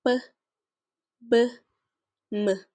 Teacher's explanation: Bilabial sounds are produced with both lips